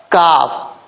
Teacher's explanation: آگے کاف ہے، یہ کاف سختی سے پڑھا جاتا ہے، باریک ہے، اس کا مخرج ہے زبان کی جڑ اوپر والے تالو کے سخت حصے سے لگے تو کاف پڑھا جاتا ہے